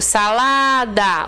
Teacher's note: O lá é mais forte, mas não tem acento